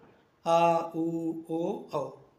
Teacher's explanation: ये पश्च स्वर होते हैं मुंह अंदर के भाग से बोले जाते हैं